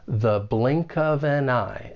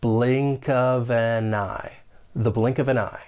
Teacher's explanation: we're going to use that weak the with the schwa sound, and then link those final four words.